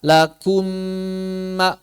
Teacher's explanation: jawabannya tidak terucap Kok tidak terucap Az itu lakum Ah ternyata dalam prosesi idgham mim pertama ini enggak dibaca gugur langsung masuk mim kedua bertasydid